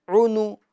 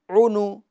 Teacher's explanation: पेश को अदा करते वक्त होंठों को गोल करना है